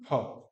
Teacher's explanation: दोनों ओष्ठ से भी बोल सकते हैं, या फ, दांत और ओष्ठ का भी